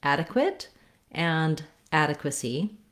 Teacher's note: Both adequate and adequacy have first syllable stress, so that means the ad syllable is long and it has a clear vowel. They both have the a, black cat vowel.